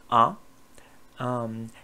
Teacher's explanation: l'air passe par la bouche. La langue est en position centrale.